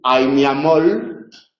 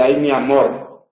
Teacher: en posición implosiva se confunden la L y la r · en el dialecto del Caribe se confunden las líquidas y las vibrantes y se puede decir a mi amol eh En lugar de